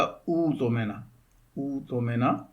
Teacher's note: حمزہ کی جگہ جو ہے ابدال کرتے ہوئے اس کو واو سے بدل دیں گے حمزہ کو، تو یہ ہو جائے گا اُؤْتُمِنَ اُؤْتُمِنَ۔